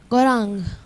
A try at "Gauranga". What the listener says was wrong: Gauranga. It's not Ram. And it's not Gaurang. It's Gauranga. What's it? They shorten everything, eh? Ram instead of Rama, Gaurang instead of Gauranga.